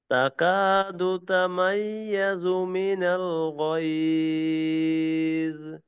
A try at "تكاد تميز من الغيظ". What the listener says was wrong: দুটোটা আর একটু ভারী করে গ এবং গ। غيظ غيظ এবং تكاد تميز من الغيظ. ذا غ غيظ غيظ ضটাকে আর একটু ই করা মোটা করা।